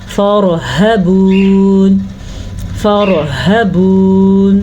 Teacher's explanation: ہاں کو واضح کر کے پڑھنا ہے اور سینے سے آواز نکالنی ہے.